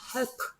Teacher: 배가 단어 맨 끝에 나왔기 때문에 음절 맨 끝에 나왔기 때문에 배가 아니고 프가 됩니다.